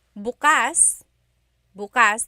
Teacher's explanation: the emphasis is on the second syllable that means open